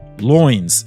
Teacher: ends up with a more American sounding last and uh loins instead of lines